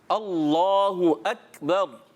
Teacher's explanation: जब इसको अदा करेंगे तो अल्लाह को मोटा करेंगे और अकबर की काफ जो है ये बारीक